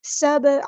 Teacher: فسواہن سبع با پہ کلکلا ہو رہا ہے، سین کی سیٹی واضح کرنی ہے ، با کو ہلانا ہے، کلکلا ہو رہا ہے، عین کو